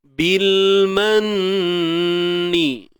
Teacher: Bil manni, nun bersabdu. Nun bersabdu wajibul gunnah, dengung kadar 2 harakat.